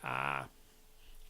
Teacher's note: beginning of the word apple and then there's a creaky voice the vocal folds are constricted but they're also not very tense and you wind up getting irregular irregular periods and you get